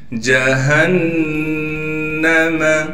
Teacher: ہا کو صاف کر کے گلے سے نکالیں گے، گلے کا وہ حصہ جو سینے کی جانب ہے، پھر ہا کو نون سے ملا دیں گے۔